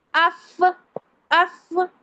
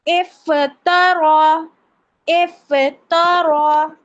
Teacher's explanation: جو فرنٹ والے تیت کے کارنرز ہے، لپس پر لگتے ہیں اور کہاں لگتے ہیں؟ لپس کے درمیانی حصے پر لگتے ہیں، تب فا کا مخرج ادا ہوتا ہے